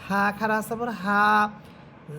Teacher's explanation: গুল হা, এই হাটা আপনারা বাতাস ছেড়ে দিয়ে পড়বেন